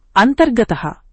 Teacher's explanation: విసర్గం తర్వాత ఘోష వ్యంజనం వస్తే విసర్గం మారి ఆర్ అవుతుంది. ఘోష వ్యంజనాలు ఏవంటే గ ఘ జ డ ఢ ద ధ బ భ ఇవి ఘోష వ్యంజనాలు విసర్గం తర్వాత ఇవేవైనా వస్తే విసర్గం మారి ఆర్ అవుతుంది. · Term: ఋత్వ సంధి